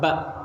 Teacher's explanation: bilabial bertemunya bibir atas dengan bibir bawah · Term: hambat letup bilabial B